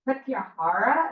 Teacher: notice the emphasis on the long ahs